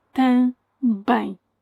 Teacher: that M is a letter with the superpower of changing the previous vowel into a nasal one. Note this only happens when the vowel and the M are part of the same syllable, the same unit.